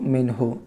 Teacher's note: میم نون زیر من، ہا پیش ہو، من ہو۔ دیکھیے، نون ساکن کے بعد ہا حروف حلقی میں سے ہے، نون ساکن کو ظاہر کر کے بلا غنہ کے جلد پڑھیں گے